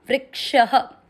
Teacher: क्षत्रिय का अर्थ होता है आधा क और श से षटकोण पूरा, तो व्री के साथ आधा क जोड़ो, वृक, और श में अ मिक्स करो, वृक्ष। श में अ की मात्रा से विसर्ग को पढ़ना है ह